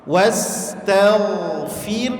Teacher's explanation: ngalirkan sifat hamas pada huruf ha